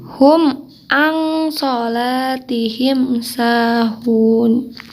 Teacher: Di sini ada nun sukun bertemu dengan shod ya. Jadi dibacanya bukan n, jadi ang ya. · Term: ikhfa